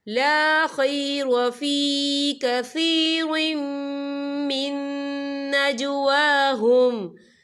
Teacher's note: وَكَانَ فَضْلُ اللَّهِ عَلَيْكَ عَظِيمًا لَا خَيْرَ فِي كَثِيرٍ مِّن نَجْوَاهُمْ، یہاں دیکھیں لا خیر فی کثیر، وا کے نیچے تنوین ہے، تنوین کے بعد جو ہے میم آ رہا ہے، اور میم جو ہے حروف یرملون میں سے ہے، تو یہاں پر ادغام ہوگا، تو ہم اسے غنے کے ساتھ پڑھیں گے